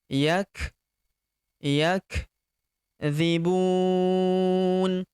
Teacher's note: huruf kaf berharakat sukun kita berikan hembusan tipis yakbu Bun. Huruf bu kita panjangkan 4 sampai 6 harakat.